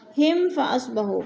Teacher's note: میم ساکن کے بعد فا آ گیا ہے تو ادھر اظہار شفی ہو رہا ہے، غنہ نہیں کریں گے